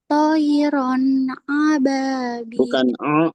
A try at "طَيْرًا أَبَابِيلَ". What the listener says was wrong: bukan ain tapi hamzah. Tayran ababil.